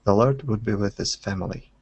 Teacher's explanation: so dropping off that H